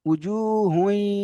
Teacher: এই ইজরাটা দেখেন, হায়ের উপরে দুপেশ তানবিন, তানবিনের পরে ইদগামে ইয়ার মালুনের 6টি অক্ষরের মধ্যে থেকে ইয়া এসেছে, তাই ইদগামে নাকিস হবে। এবং তানবিনকে ইয়ার সঙ্গে মিলিয়ে এক আলিফ পরিমাণ গুণনা করে পড়তে হবে।